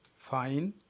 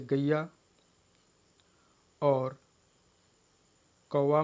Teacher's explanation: दोनों मिलकर एक स्वर जैसे हो जाते हैं और दोनों के योग से एक अक्षर बनता है और इसी अक्षर को या वर्ण को हम संयुक्त स्वर के नाम से जानते हैं। इनके उच्चारण में वक्ता एक स्वर का उच्चारण करता हुआ दूसरे स्वर के उच्चारण की ओर चलता है और इस प्रकार दोनों स्वरों के संयुक्त रूप का उच्चारण हो जाता है।